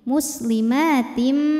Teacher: Sebab ada tanwin kasrah menghadapi huruf mim. Cara bacanya tanwin dileburkan ke mim. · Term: idgham bi gunnah